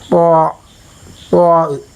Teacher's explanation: സിറാല്ലദീന അത അലൈഹി പിന്നെ ഇത്തിബാഖ എന്ന് പറയുന്ന ഒരു സിഫത്തും കൂടി അതിനുണ്ട് ഇതിബാഖ നാവിന്റെ മധ്യഭാഗം അണ്ണാക്കുമായി ചേരൽ